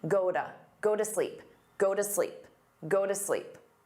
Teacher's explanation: He pronounced this quite clearly, but a native speaker might say goda, because that T between two vowels becomes a soft D.